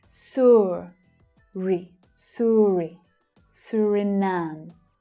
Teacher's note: And the last syllable is the stressed syllable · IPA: /ʊə/